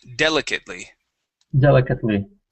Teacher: So, the stress is at the very beginning.